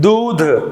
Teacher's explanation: दूध, द पर अधिक बल दे रहे हैं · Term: बलाघात